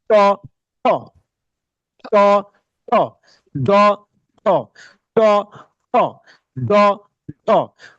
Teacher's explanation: তারপর হলো ট, এটা হলো জিভটাকে উল্টে এই উচ্চারণটা করতে হয়।